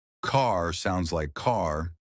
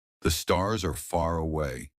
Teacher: Unlike British English, Americans stretch their R sounds. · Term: The secret R sound